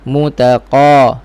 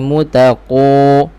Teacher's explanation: Isti'la, tebal, pangkal lidah naik, dan dia isti'la yang infitah, tengah lidah tak naik, bermakna tebal yang terbuka sedikit.